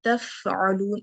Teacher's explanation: सुकून के साथ हम्स की सिफ्त बहुत नुमाया हो जाती है, तो मैं फा के ऊपर थोड़ी देर रहूंगी।